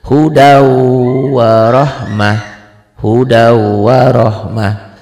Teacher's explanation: Tulisannya begini, hudan ada n-nya, dibacanya begini. N-nya hilang jadi w, hudau tuh. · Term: idgham bigunnah